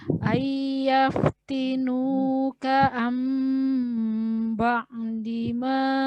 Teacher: Jadi yang tertulisnya nun sukun tapi dibacanya mim sukun. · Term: Iklab